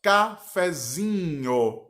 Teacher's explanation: cafezinho, o zi passou a ser a sílaba tônica. Mas o fé, ele ainda é um pouco mais forte do que a sílaba átona e mais fraca do que a tônica.